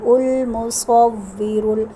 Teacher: صاد ہے موٹا کر کے پڑھیں گے، اس کے اوپر زبر ہے